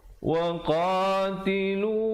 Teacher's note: qa 2 harakat, lu 2 harakat, dan hum sempurnakan saja mim matinya, hukum izhar syafawi di situ.